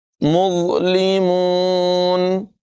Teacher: زا کی آواز پیدا نہیں ہونے دیں گے، یعنی سیٹی نہیں نکالیں گے، بلکہ مظلمون آواز پر ہوگی اور بغیر سیٹی کے ادا کریں گے